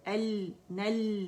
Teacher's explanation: اسے شارٹ نہیں کریں گے، آواز کٹ نہیں کریں گے، پورا 1 کاؤنٹ کے لیے جائیں گے